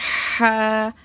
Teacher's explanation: ह में हवाओं की शोर की आवाज आएगी